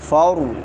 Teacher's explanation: را موٹی ہوگی کیونکہ را ساکن ما قبل فتحہ ہے